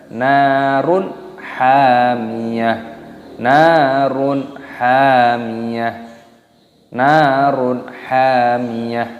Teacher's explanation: Nunnya dibaca panjang, ada tanda alifnya di sini, dipanjangkan 2 ketukan matobi'i dan di sini ada hukum idhar halqi, yaitu dhammah tanwin bertemu dengan ha. Ini hukumnya dibaca idhar halqi, dibaca jelas, haknya juga dipanjangkan, ada tanda alifnya di sini, dipanjangkan 2 ketukan matobi'i dan taknya di sini dimatikan, dibaca ha.